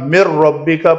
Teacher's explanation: نون مشدد غنہ کیا، نون ساکن کے بعد را ادغام کیا، نون کو نہیں پڑھا